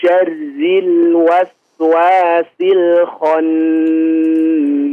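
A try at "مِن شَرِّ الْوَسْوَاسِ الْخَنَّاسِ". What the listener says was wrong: huruf lam jangan di terlalu berat ya diucapkannya syarril real seperti ada tasydidnya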